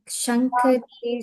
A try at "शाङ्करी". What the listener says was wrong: Shankari, not Shankari, Shankari, just long.